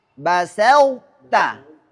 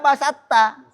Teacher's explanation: Karena sifat itbaknya huruf to harus terbaca ketika ia diidghamkan ke huruf ta. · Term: idgham naqis